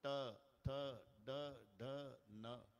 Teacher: ठ ड ढ न प्रत्येक वेळेला जीभ वरच्या टाळूला लागते · हे तालव्य आहे टाळूला जिभेचा संबंध येतो